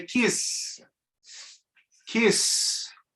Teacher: You feel the vibration at the end? No, because there's no vocal cords involved. It's voiceless.